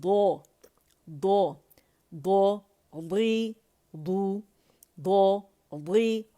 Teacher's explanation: اپنی زبان کے موٹے کناروں کو، حافۃ اللسان یعنی اقصى الحافہ کو، اور مضبوطی سے لگا کے، اور آواز ہمیں سائڈ سے آئے گی